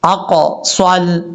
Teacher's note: स्वाद को फुल मौत पढ़ना है, सीन नहीं पढ़ना